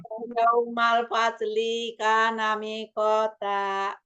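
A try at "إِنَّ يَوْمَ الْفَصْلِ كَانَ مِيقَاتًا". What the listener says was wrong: Ya, lamnya satu harokat saja. Faslika nami kota. Mi-nya 2 harokat.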